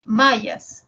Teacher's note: Primero la M es una nasal bilabial y la ya es una fricativa palatal y la S es una fricativa alveolar. Nasal, fricativa, fricativa.